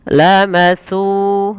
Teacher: Maka panjangkan su sepanjang dua harakat karena ia mad tabi'i.